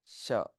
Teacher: तालव्य तालव्य शकार कहते हैं, षटकोण कहते हैं हिंदी में, संस्कृत में तालव्य शकार कहते हैं। तो इसका उच्चारण दांतों से थोड़ा सा पीछे जिह्वा को लगा करके उच्चारण करते हैं